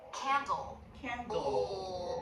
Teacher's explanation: behind the teeth right here. You'll see the tongue tip come down. It's not up for the dark L. · Dark L made with the tongue tip down, back of the tongue doing the work.